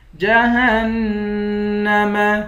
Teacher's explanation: ہا کو نون سے ملا کر نون پر غنہ کریں گے